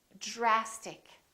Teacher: So this DR sort of becomes like the letter J, j, j.